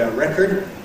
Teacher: Some people do say ‘a record’ /ˈrekəd/, and particularly Americans tend to say ‘a record’ /ˈrekɚd/